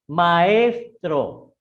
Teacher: La A es una vocal abierta y la E es una vocal abierta. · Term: hiato